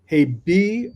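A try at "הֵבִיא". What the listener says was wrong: Okay, this is the second time that you have had a bet with no dagesh that you said b. Le'anshe veita hevi. Hevi.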